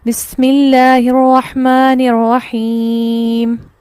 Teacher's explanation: زیر کی صورت میں بھی ہم نے اس کو ساکن کر کے وقف کیا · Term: وقف بالاسکان